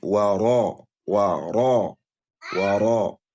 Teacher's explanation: The ra'un there is carrying fatha. You are expected to do a tafkhim al-ra.